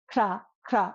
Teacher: in kra, our tongue rolls against the roof of our mouth, right? Kra, or even ksha, when we do it with the sh sound, it still rolls against the roof of our mouth.